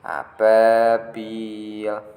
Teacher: A-nya pendek. Ba-nya baru panjang karena ada alif sebelumnya fathah. Bilnya juga panjang karena ada ya sebelumnya kasroh. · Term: mat tabi'i